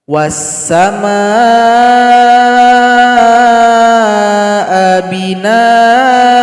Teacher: hamzah ini cara berhentinya hilangkan 1 barisnya dan dipanjangkan 2 ketukan